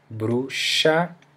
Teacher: The X has generally an ch sound, an SH sound in Portuguese